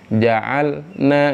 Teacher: Jelaskan huruf lamnya jangan diputus sebelum nunnya keluar